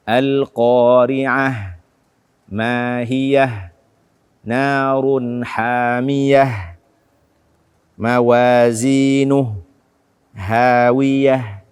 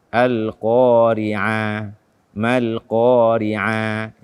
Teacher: terdapat ta marbutah yang ketika kita waqaf maka kita membacanya dengan ha